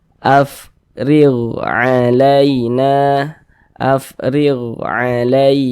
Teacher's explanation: tanda baca kasrah nih baris satu ke bawah tanda baca kasrah maka huruf ro dibaca tipis dibaca tarkik sehingga pangkal lisan kita itu tidak naik terangkat ke atas